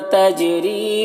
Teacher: تجری جیم میں قلقلہ ہو رہا ہے. اور را کو باریک پڑھیں گے، یا مدہ ہے، اسے ایک الف کے برابر کھینچیں گے.